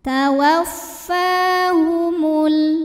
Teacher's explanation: Cara bacanya dipanjangkan fa-nya 2 harokat.